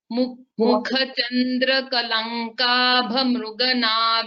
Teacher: Just this mukha kha mahaprana should be heard, and sha and sha visheshaka, that much.